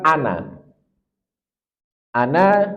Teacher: Walaupun ada huruf madnya yaitu Alif tetap dia selalu dibaca pendek